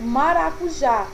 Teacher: Observem que a última sílaba, ela é a sílaba tônica e ela também é terminada em vogal.